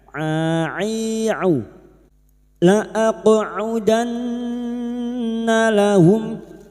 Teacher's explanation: Huruf ain wastul halqi itu tenggorokan bagian tengah. Ai'u la aqudanna lahum, nun yang bertasdid gunnah musyaddadah kita dengungkan selama 3 harokat.